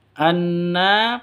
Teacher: Anna dengung dua ketukan ya gunahnya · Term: gunah musyaddadah